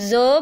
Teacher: आप जब ज बोलते हैं ना तो आपको एक वाइब्रेशन फील होती है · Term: वॉइस्ड